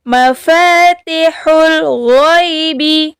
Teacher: Ghain ini harus dialirkan suara kita, tidak boleh ditahan. Alirkan suara kita ketika membacanya. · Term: huruf ghain